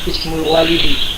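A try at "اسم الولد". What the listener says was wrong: harusnya di kasrah ya, karena di situ dia di fathah.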